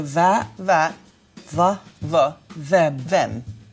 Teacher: so let's replace that th with a voiced v.